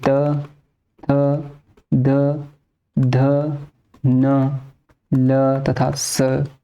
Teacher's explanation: तवर्ग, तवर्ग यानी कि त, थ, द, ध, न, ल तथा स, ये दंत की सहायता से बोले जाते हैं